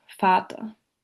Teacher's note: the open mid-central rounded vowel is found in the unstressed syllable of Vater